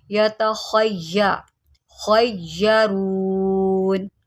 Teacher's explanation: वफ़ाकिहतिम मिम्मा यतख़य्यरून, यतख़य्यरून। ख़्वा को मोटा करें, यह हरूफ़ मुस्तअलिया में से है